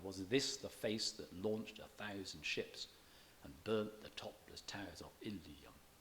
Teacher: the final syllable of Ilium attracts some stress, though strictly it shouldn't, being the last syllable of a word that's stressed already, and it also has 3 syllables.